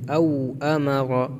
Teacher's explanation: واو لین ہے، نرمی سے جلدی پڑھیں گے